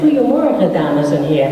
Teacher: And in Dutch, I can say, Goedemorgen, dames en heren, and it's almost the same thing. So, but it has a hard G, kind of a, so it's like you're getting ready to spit